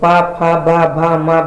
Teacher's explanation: पा फा बा भा मा बोलने पर हमारे दोनों होंठ आपस में स्पर्श होते हैं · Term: ओष्ठ व्यंजन